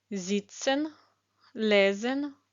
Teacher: буква С перед голосними читається як з